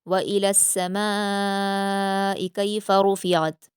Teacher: व इलस्समाइ में मीम पर अलिफ मद्दा के बाद हमज़ा इसी कलीमे में है, यानी मद्दे मुत्तसिल है, 5 हरकात के बराबर खींचेंगे।